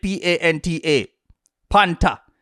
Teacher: One thing to be clear on in Jamaica is they don't pronounce the th. It will always be a hard t sound.